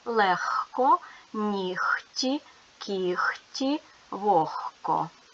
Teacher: але дзвінки г перед глухим оглушується і тому вимовляємо звук х